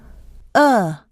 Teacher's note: tongue is positioned behind the lower teeth the lips are unrounded the uh is LAX so it is short in duration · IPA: ʌ, /ʌ/